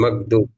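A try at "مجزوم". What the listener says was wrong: হ্যাঁ, মাজজুম, মাজজুম, মাজজুম, মাকদুম না তো, মাজজুম, জিম আর দা।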